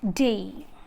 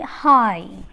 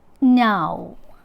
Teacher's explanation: you can feel that the glide movement is towards a closing position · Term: closing diphthongs